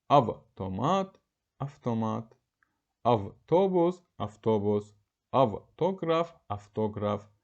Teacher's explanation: V hərfinin F kimi tələffüsü. Yəni V cigit samiti özünün karşılığı F-ya çevrilir.